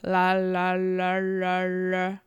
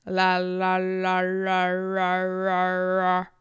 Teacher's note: tap just a little bit farther backward on the roof of the mouth. And so it's la.